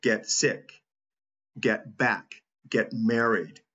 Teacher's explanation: notice that the word get is said softer than the words following it in American English it almost sounds like Get get sick get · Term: reduced